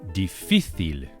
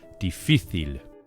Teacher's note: with the accent or the stress on the middle syllable, on the middle I